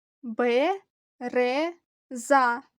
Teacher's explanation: у нас три складове слово наголос падає на другий склад